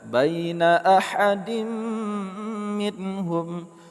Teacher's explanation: Huruf dal harakat tanwin bertemu dengan mim idgham bi gunnah.